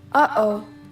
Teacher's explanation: The glottal stop, aka the break. It sounds like the pause between syllables of uh-oh.